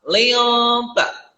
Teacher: huruf li ketemu dengan nun mati, lalu ketemu lagi dengan huruf ta, maka ini disebut dengan ikhfa. Maka membacanya samar.